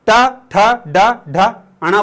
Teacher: तुम्हारे ऊपर वाले जो दांत है उसके थोड़ी सी ऊपर तुम्हारी जीवान टकराएगी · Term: मूर्धन्य